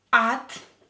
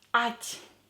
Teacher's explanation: Here pay attention to the soft sign. T will be a little bit softer.